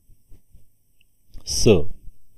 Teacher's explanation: अघोष किंवा श्वास व्यंजन वर्ण आहे दंत्य व्यंजन वर्ण आहे महाप्राण मिश्रित व्यंजन वर्ण आहे अंत्य किंवा जोडदंड असणारे व्यंजन वर्ण